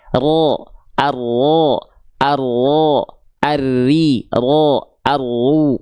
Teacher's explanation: Sedikit-sedikit, getarannya nggak boleh banyak-banyak karena dia punya sifat namanya takrir. STLJ. Sedikit tapi tegas, lugas dan jelas.